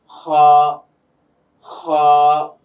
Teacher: এই হলক বা কণ্ঠনালীর শেষ ভাগ থেকে উচ্চারিত হয় দুটি হরফ আমরা পেয়ে থাকি, একটা হচ্ছে খ আর একটা হচ্ছে গাইন। তো খটা যখন আমরা বলছি দেখবেন যে গলার মধ্যে বা কণ্ঠনালীর মধ্যে একটা কম্পন সৃষ্টি হচ্ছে, আওয়াজটা প্রকম্পিত হয়ে বের হচ্ছে।